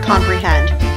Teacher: Com is unstressed, pre is unstressed, hend is stressed. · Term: Rising meter